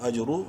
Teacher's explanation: را کو منہ بھر کے پڑھیں گے پیش کی وجہ سے